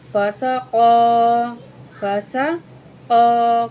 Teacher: کاف کو موٹا کر کے پڑھیں گے